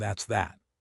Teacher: Stress on the second that